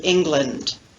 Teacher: difference between land and lund as in the word england so we have an unstressed syllable the second syllable of the word england and the unstressed vowel schwa